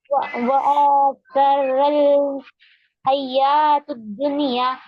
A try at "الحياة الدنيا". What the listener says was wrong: حیات الدنیا، تا پر کیا ہے؟ زبر ہے نا. ہا ہے وہ ہا نکالیے حلق سے.